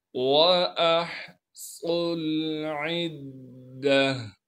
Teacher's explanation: गोलता को वक़फ़ की हालत में हा बना देंगे। · इस वाव को हम नहीं पढ़ेंगे बल्कि सौत को डायरेक्ट इस लाम साकिन से मिला देंगे।